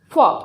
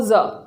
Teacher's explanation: फ दंतोष्ठ में, और ज आएगा वर्तस्य में।